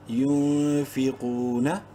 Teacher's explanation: یونفی، قوف واو پیش قو، منہ بھر کے پڑھتے ہوئے قوف کو 1 الف کے برابر لمبا کریں گے واو مدہ کی وجہ سے